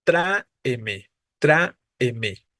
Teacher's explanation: la siguiente escribiríamos la división silábica así tra e me no tenemos tres sílabas y la tónica es la a